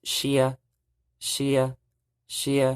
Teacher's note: you see how my tone went straight up that's the high Tone